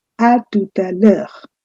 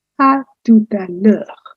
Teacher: There is no break practically between the words. They all go in a continuum, à tout à l'heure, as if it were one single term.